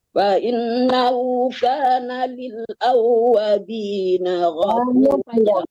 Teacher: Fa'innahu kana li'awwabina ini kana lil, bukan li ya, tapi lil, ada lam lagi mati di depannya.